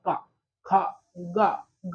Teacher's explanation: मतलब कंठ है जो हमारी तालु है, जीभ के ऊपर का भाग तालु है, तो यहाँ से जैसे बोले थे का, खा, गा, घा, मतलब यहाँ कंठ है, कंठ बोलते हैं। तो इसका उच्चारण स्थान ताल के पिछले भाग से होता है, इसे हम कंठ कहते हैं।